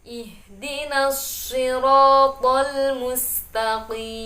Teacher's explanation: Di situ perhatikan makhrajnya shad dan juga sin berbeda. Tentunya sin lebih tipis daripada shad.